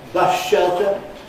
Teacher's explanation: We change /s/ to /ʃ/ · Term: assimilation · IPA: /ˋbʌʃ ʃeltə/